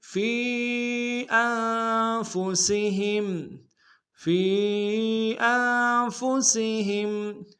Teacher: یا مدہ، اور یا مدہ کے اوپر مد منفصل ہے، کم سے کم دو الف دال بھی کھینچیں گے